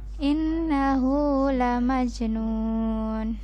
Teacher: Ini jimnya qalqalah maka dipantulkan